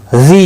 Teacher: یا مدہ ہے، ایک الف کے برابر کھینچ کر پڑھیں گے